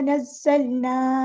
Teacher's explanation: ज़ा को सख्ती से अदा करना है और लाम बारीक पढ़ना